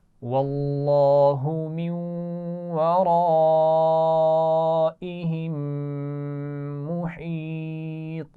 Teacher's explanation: من ورائہم نون ساکن کے بعد واو ہے تو اس کو ملا کر بھی پڑھیں گے اور غنہ بھی کریں گے. ورائہم را موٹی پڑھی جائے گی اور آگے بڑی مد ہے تو اس کو کھینچ کر بھی پڑھیں گے خوب. ورائہم میم ساکن کے بعد پھر میم آ گیا ہے تو یہاں پر بھی غنہ کیا جائے گا.